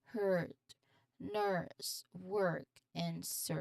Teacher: It's a long sustained sound where your tongue is fairly central and often slightly curled back, especially in our controlled accents like general American English. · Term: long R sound